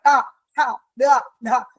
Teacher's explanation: മൂർധാവാണ് അതിന്റെ ഉച്ചാരണ സ്ഥാനം ടവർഗ്ഗത്തിന്റെ